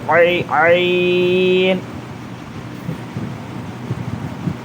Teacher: عین میں حلق سے، بیچ حلق سے آنا ہوا